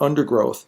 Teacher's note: one of those syllables is going to be stressed in undergrowth it's the first syllable